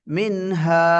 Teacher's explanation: மின் இத்ஹார். நூன் என்ன செய்ய வேண்டும்? தெளிவாக வெளிப்படுத்தி ஓத வேண்டும்.